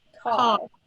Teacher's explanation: That's called a retroflex R. That's what our R's do in an American dialect. Our tongue started flat and then it pulled back a little bit.